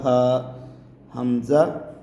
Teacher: ہا کو حلق کے تھوڑا سا نیچے سے سینے کی سائڈ سے ادا کیا جائے گا